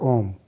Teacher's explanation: Number 3, प्लुत स्वर, इनके उच्चारण में हर्ष और दीर्घ स्वर के उच्चारण से 3 गुना समय लगता है।